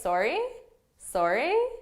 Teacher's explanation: it's really important that you have this rising intonation because if you say sorry with your intonation falling they're going